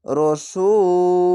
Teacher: রসূল তিন আলিফ টেনে থেমে যাবেন কেন পেশের পাশে অসাকিন এক আলিফ টেনে পড়তে হয় শেষ অক্ষর